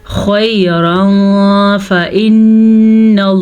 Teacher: नून के गुन्ने का ध्यान रखना है, गुन्ने को वाज़िया करना है आपने, कम मिकदार में नहीं पढ़ सकते क्योंकि नून पे शद है।